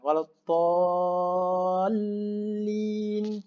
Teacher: Lepas kita selesai baca 6 harakat alif tu, sebelum nak sebut lam berbaris kasrah, kita macam menahan sekejap. Sebab tu huruf syiddah, huruf yang bersabdu.